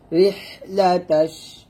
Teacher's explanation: এখানে রিহ রিহ বলবেন না, রিহ হাটের চাপ দিয়ে বলবেন, চিকন করে বাতাস বের করবেন